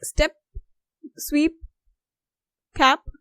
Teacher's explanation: Okay, so then you're not using a lot of air, but when you use P in the end, then it is inaudibly released